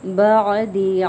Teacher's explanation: عین کو مخرج کے ساتھ ادا کرنا ہے، درمیانی حلق سے نکلتا ہے